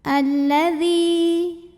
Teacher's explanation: Karena jika ada lam tasydid sebetulnya lam ini double, ada dua, lam sukun dan lam fathah. Jadi huruf syamsiyahnya lam, maka cara bacanya dileburkan. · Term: alif lam syamsiyah